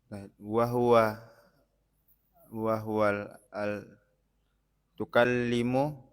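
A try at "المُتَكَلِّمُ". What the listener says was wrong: itu kalau tukalimu harus ada tasjid juga lamnya.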